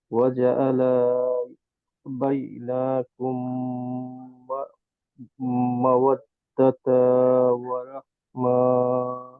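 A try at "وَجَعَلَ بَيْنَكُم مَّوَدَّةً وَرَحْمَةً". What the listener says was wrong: ওয়াজাআলা, এত বড় টান দেওয়ার মানে হচ্ছে মনে হবে এখানে একটা আলিফ আছে, আলিফ তো নাই।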